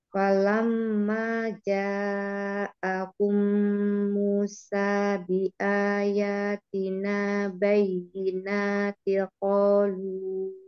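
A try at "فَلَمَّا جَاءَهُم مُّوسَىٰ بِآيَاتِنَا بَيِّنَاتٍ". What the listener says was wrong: Nah, tanwin itu mukhof ikhfa.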